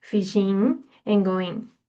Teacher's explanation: The G dropping at the end of ing verb forms